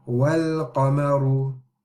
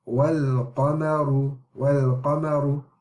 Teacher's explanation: we're only skipping the hamza, the alif here, and we are going and connecting it to and joining it to the lam. And the qaf and the mim, the ra is as normal. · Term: moon letters